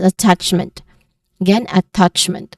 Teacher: it ends with the syllable meant which is unstressed